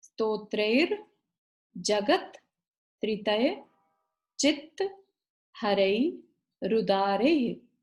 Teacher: विसर्ग है ना, तो इसलिए ह की ध्वनि आएगी।